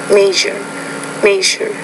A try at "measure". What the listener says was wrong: It's that second sound. So the last sound, Asia, you're okay with that, so you know how to pronounce it there, but I still think that second sound in lesson 16, it's a palatal consonant, you need to work on improving your pronunciation of that.